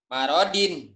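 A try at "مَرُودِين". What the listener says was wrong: Dalnya jangan kedal ya.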